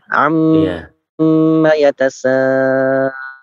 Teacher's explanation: Amma mimnya mim bertasydid ditahan 2 harokat ya